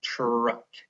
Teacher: Please notice that that is a consonant blend at the beginning. I'm not saying chuck with the digraph ch at the beginning. I'm saying truck.